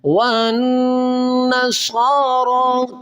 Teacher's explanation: واؤ کو نون کے ساتھ ملائیں گے، یہ جو بیچ میں ایک الف ہے اور ایک لام ہے اس کو نہیں پڑھیں گے، واؤ کو اس نون کے ساتھ ملائیں گے۔